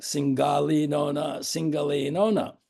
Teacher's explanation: It's rhymed to the accompaniment of violin, drum, and triangle, usually. It has a 2-against-3 rhythm and stresses syllables of the 2 words